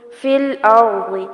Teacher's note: را کو بھی پر کیا جائے گا اور ضاد کو بھی پر کیا جائے گا